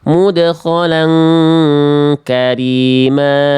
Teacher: di sini kho-nya harusnya cukup satu harokat, lamnya tanpa tasdid